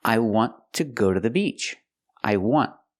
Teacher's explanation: The consonant at the end is a T, but we don't release the T. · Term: stop T